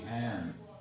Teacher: instead of hang would be han, instead of sing would be sin